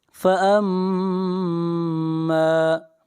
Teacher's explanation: میم مشدد ہے، میم کے اوپر غنہ کریں گے